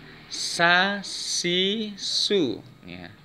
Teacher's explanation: Rikhwah suara dilepaskan, kalau siddah suara ditahan. Sin termasuk huruf yang memiliki sifat rikhwah, yaitu suaranya dilepaskan.